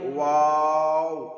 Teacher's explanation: 2 ঠোঁট না মিলিয়ে মাঝখান হতে উচ্চারিত হয় ওয়াও। 2টি ঠোঁট মিলবে না, এই নিচের ঠোঁট আর উপর ঠোঁট মিলবে না।